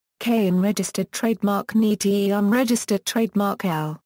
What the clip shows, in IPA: kənˈtəl